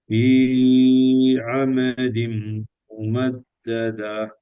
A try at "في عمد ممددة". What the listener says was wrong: இதுல பிரதர் ஃபீய நாங்க அளவுக்கு அதிகமாக நீட்டக்கூடாது. அப்படி நீட்டினத்தால வார விளைவு என்னென்றால், நீங்க என்னதான் கஷ்டப்பட்டு ஆயின உச்சரிச்சாலும் அது அழித்தான். ஐனுக்கு முன்னால வாரது இந்த மாதிரி இரண்டு கவுண்டை விட 1 செகண்டை விட கூடுதல் நீட்டுறதுக்கு வராது. ஐனுக்கு முன்னால வார எழுத்து நல்லா கவனமா கேட்டுக்கிறோம். பாருங்க இப்ப மே என்று நீட்டுறோம். ஏன்னா 3 செகண்ட்ஸ் நீட்டுறோம், அதுக்கு பின்னால அலிஃப் தான் வந்திக்கு.